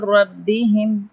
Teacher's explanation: یہاں پہ تنوین ہے، دو زبر اور یہاں پہ میم مشدد ہے، تو یہاں پہ ہم غنہ کریں گے ایک الف برابر، یعنی ہم آواز کو ناک میں چھپائیں گے. اور را یا مشدد ہے، دو بار پڑھیں گے اور را کو تفخیم کریں گے یعنی موٹا پڑھیں گے